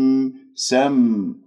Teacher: ميم ساكنة تتجلى الصفة في الحروف الساكنة الميم من أحرف التوسط